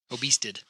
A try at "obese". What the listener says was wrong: No, obese. No T.